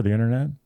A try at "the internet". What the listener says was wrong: I think what makes you sound old is the fact that you're pronouncing the T. You can pronounce the last T.